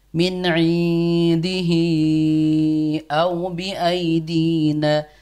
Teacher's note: hinya harusnya panjang 4 atau 5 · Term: mad jaiz munfasil